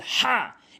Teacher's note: হা এর সঠিক উচ্চারণ হচ্ছে হালকের মাঝখান থেকে